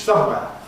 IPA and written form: ˈsʌmweə (somewhere)